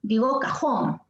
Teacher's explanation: Sí, porque yo no digo cajón, digo cajón, ¿no? Ahí está la fuerza de voz en jón.